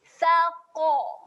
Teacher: Pastikan qaf dibunyikan tebal kerana dia merupakan huruf tebal.